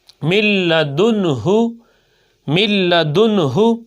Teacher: نون ساکن کے بعد لام آ گیا تو ادغام بغیر غننے کے ہوگا